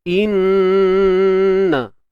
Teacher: kena dengung dengan tahapan yang tertinggi sekali lah, gunnah musyaddadah, dengung yang tahap sempurna. Jangan malu-malu nak buat, terus tolak ke pangkal hidung kita.